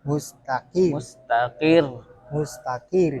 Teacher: tipis rnya tapi ada penekanan